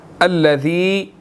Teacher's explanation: ذال کے بعد کیا مدہ ہے، اس کو ہم نے 1 سیکنڈ جو ہے وہ کھینچنا ہے